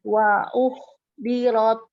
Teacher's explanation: Ha itu harus keluar udaranya.